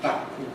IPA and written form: bakkɯ (バック)